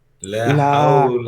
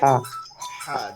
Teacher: حول হ্যাঁ, এটা কি মনে আছে? হা উচ্চারণটা হবে হলকের মাঝখান থেকে, হলকের ها হা, জিমের পরে হা, লম্বা হা যেটা আছে।